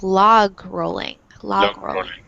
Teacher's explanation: in English they really pronounce that G sound, so it's like log rolling